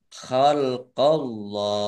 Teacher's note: Allahnya dibaca tebal karena harokat di depannya fathah. Lam fathah berdiri mat tobi'i, tetapi karena bertemu dengan huruf terakhir yang dibaca sukun karena wakof, maka menjadi mat arid lis sukun.